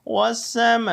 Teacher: میم کے اوپر مد آ گئی ہے لہذا ہم نے مد کی وجہ سے اس کو لمبا کرنا